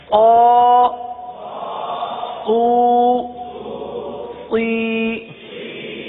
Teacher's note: صاد حروف مستعلیہ میں سے ہے, اس لیے صاد کو پر پڑھیں گے تو باریک نہ ہو